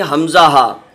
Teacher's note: حمزہ ہا یہ شروع حلق سے نکلتے ہیں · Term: حروف حلقی